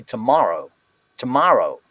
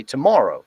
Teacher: in the general american accent it's the ah whereas in canadian it goes into the force set of words